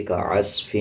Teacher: صاد کے اوپر جزم ہے، عین کو صاد کے ساتھ ملا کے پڑھا جائے گا، صاد کو موٹا پڑھا جائے گا